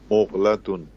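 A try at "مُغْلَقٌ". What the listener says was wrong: ता नहीं है, कौफ है ये आखिर में, ठीक है, दोबारा पढ़िए, मुग़लक़ुन।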